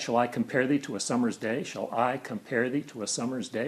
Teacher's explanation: we have four rhetorical stresses, four voice stresses, or rhythmic stresses, we would say, but there are five metrical stresses.